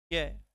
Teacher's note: जब आप य और व का उच्चारण करते हैं तो कहीं पर भी आप स्पर्श नहीं पाएंगे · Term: अर्ध स्वर